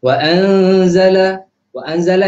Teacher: Wa anzala itu adalah ikhfa hakiki. Nun mati bertemu dengan huruf za. Jadi bacaan dia macam mana? Dengung dua harakat.